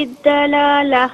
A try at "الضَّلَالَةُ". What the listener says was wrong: دلالہ نہیں، دلالہ، دعات کو موٹا پڑھیں، دعات کو موٹا پڑھیں، دلالہ۔